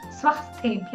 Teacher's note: మహాప్రాణాలు ఎక్కడంటే స్వస్థేభ్య అక్కడ మీరు స్థ అని కరెక్ట్ గా థ అని పలకాలి